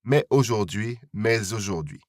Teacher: This liaison is optional, so it's up to you whether you pronounce the S at the end of mais or not